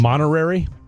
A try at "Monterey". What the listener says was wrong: Monterey. You add an extra R.